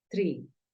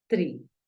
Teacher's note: la doble E tiene un sonido como una I, pero es un poco más alargada.